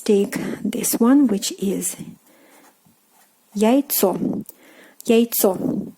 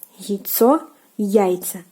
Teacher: So here again, the stress changes to the first syllable